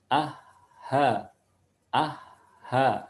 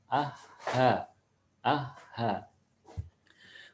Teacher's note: huruf H ada di tenggorokan bagian bawah